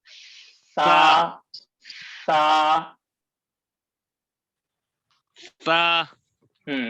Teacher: دونوں دانتوں کے بیچ میں زبان آنا چاہیے